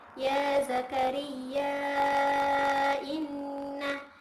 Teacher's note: Contohnya itu terdapat pada ayat ke-7, yakni salah satu contohnya terdapat pada ayat ke-7, yakni yang berbunyi Ya Zakaria inna Ya Zakaria itu dipanjangkan, yaknya dipanjangkan 4 atau 5 harokat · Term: mad jaiz munfasil